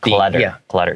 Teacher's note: This word clutter, even though it has 2 T's, I pronounce it more like a D.